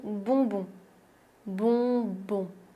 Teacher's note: Le prochain mot est assez rigolo et très bien si tu veux t'entraîner à prononcer le son on, voyelle nasale on, c'est le mot bonbon.